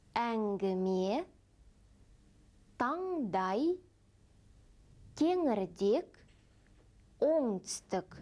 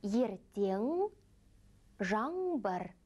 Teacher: Он является носовым, сонорным. Обратите внимание, когда произносится звук «н», кончик языка опускается к нижним зубам. Попробуйте «н».